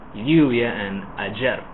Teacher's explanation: And then, for example, in Misiones in Argentina, people will say lluvia and ayer. So you have the y sound for the double L and the j sound for the j or y.